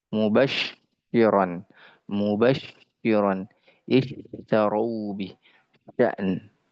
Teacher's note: jangan sampai tafasyi ini dia berubah menjadi sin